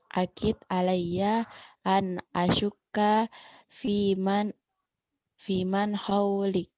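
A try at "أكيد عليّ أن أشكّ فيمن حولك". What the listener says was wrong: Ya, betul.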